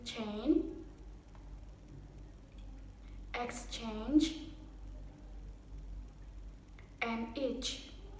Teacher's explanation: It begins with an articulation practically the same as t sound, but instead of a rapid release with plosion and aspiration, the tongue moves to the fricative sh. So the plosive sound is followed immediately by fricative noise. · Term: ch sound